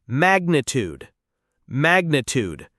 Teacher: The stress is on the first syllable and it ends with a tude sound like food.